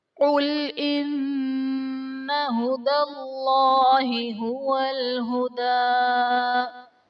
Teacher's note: ہدى اللہ میں اسم جلالت اللہ عز و جل کے لام سے پہلے حرف پر زبر ہے تو یہاں پر اسم جلالت اللہ عز و جل کے لام کو پر یعنی موٹا پڑھیں گے۔